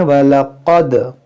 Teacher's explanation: क़ाफ़ को मोटा करेंगे, दाल में कलकला करेंगे